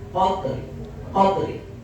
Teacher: jadi rum itu membacanya dengan setengah harakat